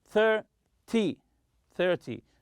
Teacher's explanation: in 10 numbers, such as 20 and 30, always stress the first syllable.